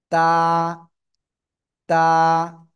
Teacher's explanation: জিহ্বার আগা উপরে দুই দাঁতের গোড়ায় লাগাবেন, লাগিয়ে উচ্চারণ করবেন।